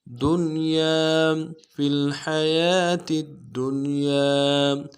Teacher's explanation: دال کو نون کے ساتھ ملانا ہے، نون ساکن غنہ کریں گے ، اور یا کے ساتھ الف مدہ ہے، یہاں پہ بھی